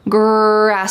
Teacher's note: this is the R sound, or in American English, we often call this the colored R because it's very strong